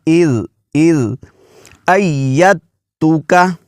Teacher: اذ ایتو کا، اس کا تلفظ ایسے کریں گے جی، اذ زال کو نرمی سے ادا کریں گے، کیونکہ زبان کی نوک اور ثنایا علیہ کے جو دانت ہیں ان کے جو اندرونی کنارے ہیں وہاں پر زبان کی نوک لگے گی، اور زال پر سیٹی کی آواز بالکل نہیں نکالنی آپ نے، وگرنہ پھر یہ زا پڑھا جائے گا